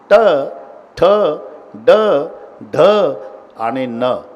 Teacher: जीभ वाकडी होऊन वरच्या टाळूला स्पर्श करते प्रत्येक वर्णाच्या. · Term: तालव्य